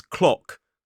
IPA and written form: klɒk (clock)